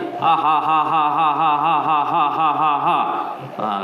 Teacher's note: Tiada angin, hanya sebutan huruf.